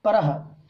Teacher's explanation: विसर्ग का उच्चारण आधे हा के बराबर होता है। जैसे हा है ना, इस हा का उच्चारण पूरा होता है हा, लेकिन विसर्ग का उच्चारण हा के उच्चारण का आधा होता है, जैसे अर्ध हकार के बराबर।